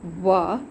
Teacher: जीभ दांत और होठों को छूती है, होठ गोल हो जाते हैं, होठ एक दूसरे को छूते हैं और जीभ दांतों को छूती है, तो दंत ओष्ठ हो जाते हैं। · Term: दंतोष्ठ